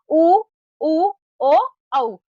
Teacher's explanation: जिन स्वरों के उच्चारण में होठ गोल या गोलाकार हो जाते हैं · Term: वृत्ताकार स्वर